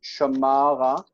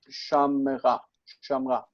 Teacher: through secondary modification, the accent shifts to the end. Okay, the accent shifts and this one reduces.